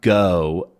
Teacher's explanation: the O sound in go is actually very open, especially in my dialect. Go, it starts out there, go instead of go.